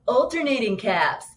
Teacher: we're seemingly pushing more air through our noses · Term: nasally voice